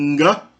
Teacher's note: O som do nga, que é a nasal velar.